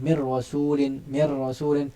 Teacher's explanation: Sifat bergetar yang ada pada hujung lidah ketika menuturkan huruf ra. Kita mau ada getar tu mir rasulin, tapi getaran tu janganlah bersangatan, jangan terlalu mubalaghah, kerana getaran itu adalah satu getaran yang orang kata biasa saja, sekadar uruf saja. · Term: sifat takrir